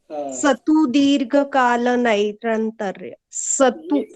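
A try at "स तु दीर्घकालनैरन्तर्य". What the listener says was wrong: ये जो है ना, केवल ये शतु सतु स बोलना है, ये दंती स है, इसका प्रोनाउंसिएशन दांतों से आना चाहिए, ठीक है? और श या श नहीं बोलना है, स बोलना है, स।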